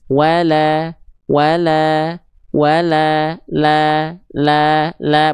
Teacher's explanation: Lamnya tipis berharakat baris atas gitu ya